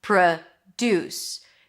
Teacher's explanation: So the first syllable is a schwa. Second syllable is stressed. Deuce. That's the primary stress with an oo as in food.